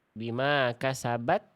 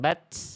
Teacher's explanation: Hati-hati ta sukun. Jangan sampai ada bunyi es.